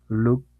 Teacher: Pero si digo help, la última no vibra. Look, no vibra.